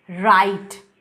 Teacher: ऐसे साउंड्स को प्रोड्यूस करते वक्त हमारे टंग का tip roof of the mouth के उस पॉइंट को टच करता है, that is just behind the teeth ridge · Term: पोस्ट एल्वियोलर